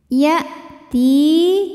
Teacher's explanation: hamzah punya sifat dari segi suara namanya syiddah, kuat ya, tertahan bunyinya saat kita tekan ke makhrajnya.